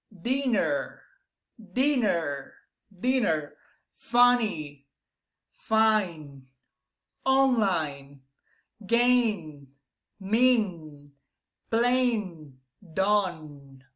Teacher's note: you're going to feel a little bit that the air is being released through your nose